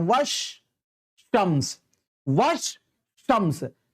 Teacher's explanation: تو الف لام کو پڑھا نہیں جاتا ہے بلکہ اس کے یعنی حروف شمسی جو ہے وہ مشدد ہو جاتا ہے، یعنی اس کے اوپر تشدید ہو جاتا ہے.